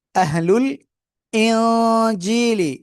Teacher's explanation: একফা গন্না, নুন সাকিনের পরে একফা করে জিম। জিমিয়াজের জি এক আলিফ টান।